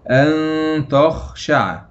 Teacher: إخفاء حقيقي لمجيء التاء بعد النون الساكنة، والتاء من حروف الإخفاء الحقيقي المجموعة في أول كلمة البيت. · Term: اخفاء حقيقي